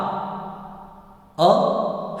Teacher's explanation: ह्रस्व अ ये कंठ से निकलता है